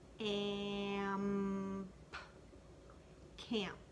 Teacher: Now remember that A in camp is a nasal sound.